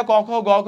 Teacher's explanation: এগুলো হচ্ছে কণ্ঠ যে আমার কণ্ঠ থেকে আসতে থাকে